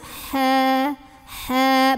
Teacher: H yang pertama halus, ha, ha, banyak anginnya, keluarnya dari tenggorokan tengah